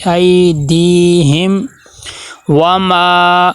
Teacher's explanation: اے دی ہم، یہاں پہ دیکھیں میم ساکن ہے، میم ساکن کا جو قاعدہ ہم نے کتنی بار پڑھا ہے کہ یہاں پہ اظہار شفی ہوگا کہ میم کی آواز کو ہم ظاہر کر کے پڑھیں گے، ناک میں نہ جائے۔ ایدیہم وما، واو کے اوپر زبر ہے اور زبر حرکات غیر مدہ میں سے ہے، تو واو کو لمبا نہیں کرنا، اور دوسرا واو کو ادا کرتے ہونٹ گول ہونے چاہیے۔